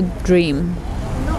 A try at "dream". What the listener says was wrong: Good, so dream is a long vowel E. Try and extend the nasal sound, dream.